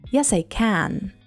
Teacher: When can occurs at the end of a sentence, pronounce it with a strong a sound, as in cat. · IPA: /æ/